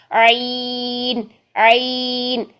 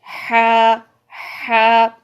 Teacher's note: یہ دونوں کا مخرج جو ہے وہ حلق کا درمیانی حصہ ہے